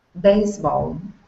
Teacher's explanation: give me an unvoiced S here